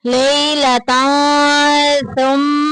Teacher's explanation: جب بھی تنوین کے بعد سا آ جائے تو اخفا ہوگا، ہائڈ کر کے پڑھیں گے۔